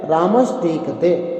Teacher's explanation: रामस का जो दंत सकार है वह मूर्धन्य शकार में बदल जाएगा और इसका नाम हो जाएगा ष्टुत्व संधि।